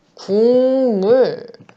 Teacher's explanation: 기역, 디귿, 비읍이 각각 이응, 니은, 미음으로 바뀝니다. 니은과 미음을 만났을 때. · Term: 비음화